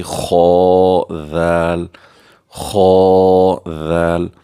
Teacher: کر کے پڑھیں گے کیونکہ یہ مستعلی حروف میں سے ہے، اور ذال کو باریکی سے نرمی سے پڑھیں گے